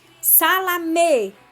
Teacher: Salamé, então a gente já vê o acento, né, e o som do E bem forte na sílaba me